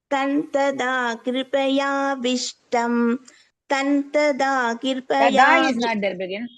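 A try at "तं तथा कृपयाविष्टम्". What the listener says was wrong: Tada is not there, begin. Tada is not there. Tha, tha. There are 2 tha. Tha, tha. Big tha. Second tha. Tantatha krupaya vishtam.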